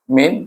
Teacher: Di sini ada dua hukum. Min itu dibaca dengan izhar, bunyi ada dia pergi kepada nun, makhraj nun, min tapi tidak berdengung